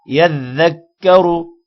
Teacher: رو کو موٹا پڑھیں گے پیش کی وجہ سے